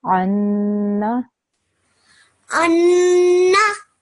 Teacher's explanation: I just want your ghunna sound to be a bit more longer. So I want that stretched for a few more, another second or so.